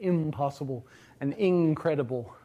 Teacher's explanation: it just assimilates in place uh to the following consonant. So, you get impossible and incredible where you get a verer nasal version of in. · The uh consonant at the end of that prefix is always nasal. Um, it just assimilates in place uh to the following consonant. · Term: assimilation rule